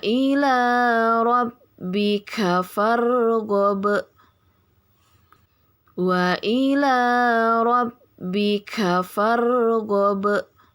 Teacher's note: Yang pertama itu ada mad tabi'i pada bacaan wa ila ya, la 2 harokat diayun sekali saja. Kemudian rabbika farghab ya, farghab, yang di belakang itu qalqalah kubra ya.